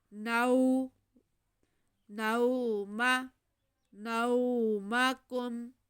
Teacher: واو ساکن سے پہلے زبر، واو لین ہے، اس لیے ہم نے اسے کھینچنا بالکل نہیں ہے۔ نو، نوم، نومکم، باریک کاف اور میم ساکن، کاف کو باریک رکھیں گے۔